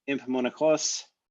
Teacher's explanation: So that's that N, which changed to an M before the P.